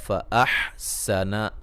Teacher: یہاں حا کو واضح نکالیں گے، سین کو باریک سیٹی سے